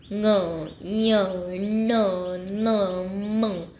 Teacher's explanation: ये हम जब उच्चारण करते हैं तो थोड़ा नाक से आवाज़ आता है। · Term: अनुनासिक व्यंजन